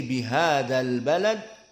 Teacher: dimadkan menjadi dua harakat bihadal Balad bihadzal Balad itu salah tapi dihilangkan madnya karena bersambung dengan dua sukun Al dinamakan iltaqo bertemu Baina sakinain di antara dua sukun bihadal